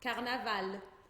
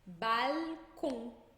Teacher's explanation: Então é sempre com esse L lá nos dentes de cima, grudando no céu da boca, tá? Nunca com som de U.